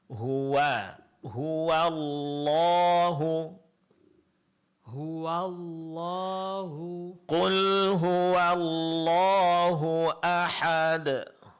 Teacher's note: pengucapan huruf wau sebelum lafaz Allah ini tetap ditipiskan. Jangan terpengaruh oleh tebalnya huruf lam pada lafaz Allah sehingga wau menjadi tebal.